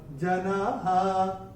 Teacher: तीसरे और चौथे चरण में भी चैंटिंग के हिसाब से कोई नियम है नहीं, मगर चौथे चरण की समाप्ति पे जो विसर्ग आ रहा है, विसर्ग का उच्चारण केवल और केवल ह ही होगा।